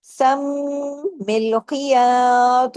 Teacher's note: मीम पे तशदीद है गुना कीजिए डबल मीम है सम मिलयात ख को हैवी सम मिलयात वी भी करना है